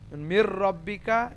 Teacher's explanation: নুনের উচ্চারণটা সাইলেন্ট হয়ে যাবে সাইলেন্ট মানে মিক্স হয়ে যাবে কিন্তু প্রথমটাতে গুন্নাস সহ মিক্স হবে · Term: ইদগাম